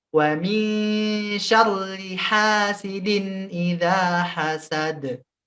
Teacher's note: Jangan lupa qalqalah di akhirnya idza hasad. Ada d-nya. Qalqalahnya kubra.